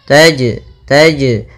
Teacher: Wasyamsu, kemudian tajri, tajri pada lafal jim, ini ada jim sukun atau jim mati, maka ia kita namakan dengan bacaan qalqalah, yang mana suara jimnya harus memantul. Taj, tapi tidak disaktah seperti ini.